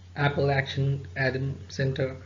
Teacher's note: two syllables the stress is on the first syllable